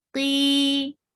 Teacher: Qi will be comparatively light, not that heavy, and it will be 2 haraka long. Qi, 2 counts long.